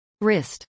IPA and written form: rˈɪst (wrist)